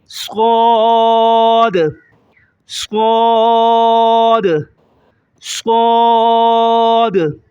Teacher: ایک الف سے زیادہ کھینچیں گے اور موٹا کریں گے